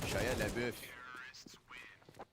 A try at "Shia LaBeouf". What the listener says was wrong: Yeah, you're adding syllables.